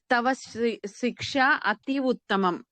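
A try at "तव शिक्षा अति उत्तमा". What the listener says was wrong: శిక్ష దీర్ఘం పెట్టాలి.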